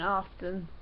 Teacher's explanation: there's no T in oftnn